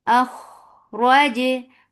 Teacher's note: Kha is heavy and it has rakhawa, so the sound should flow but should not drag.